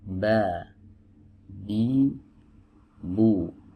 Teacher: huruf ba ini adalah huruf yang keluar dari dua bibir ya, yang dipertemukan